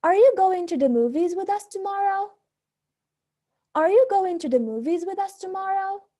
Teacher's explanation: for yes or no questions we use a rising intonation at the end of the sentence